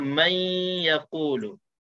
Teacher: Tapi nun seolah-olah dah dimasukkan ke dalam ya dan hilang nun itu. Hilang nun itu tapi kekalkan sifat dengung dua harakat itu. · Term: idgham